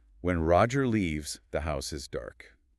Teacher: What the sentence actually means is when Roger leaves, pause. The house is dark. The house is dark at the time of his leaving. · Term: early closure